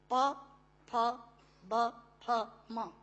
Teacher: दोनों होंठ मिलाकर बोले जा सकते हैं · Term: ओष्ठांग